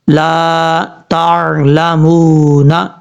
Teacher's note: لام زبر، لام الف زبر لا، تا عین زبر تا، لام زبر لا، میم واو پیش مو، نون زبر نا، لا تعلمون، اس طریقے سے پڑھیں گے. میم کے بعد جو واو ہے یہ واو مدہ ہے، ایک الف کی مقدار اس کو لمبا کر کے پڑھا جائے گا